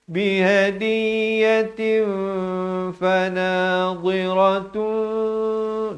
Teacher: Di sini asalnya ta ni tanwin di depan 2 dhammatain, tapi dalam Al-Quran Rasam Usmani dia tulis satu dhammah ditemani dengan mim kecil yang ekor ke bawah bertemu ba. Di sinilah hukum iqlab, ditukarkan daripada bunyi nun kepada bunyi mim